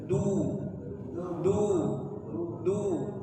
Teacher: huruf dal sesuai dengan makhrajnya, yaitu ujung lidah dengan pangkal gigi atas. Dia keluarnya dengan lembut, jadi jangan ditekan ya.